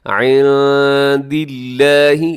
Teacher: یہاں نون ساکن ہے اور نون ساکن کے بعد دال ہے، تو یہاں اخفا کیجیے گا، عند اللہ، لفظ اللہ کو باریک رکھیے گا، لفظ اللہ سے پہلے دال کے نیچے زیر ہے، اسے عند اللہ نہیں پڑھنا بلکہ عند اللہ۔